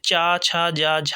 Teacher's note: तो ये तालव्य ध्वनियाँ हैं, तालु से, मुंह के तालु से बोली जाती है।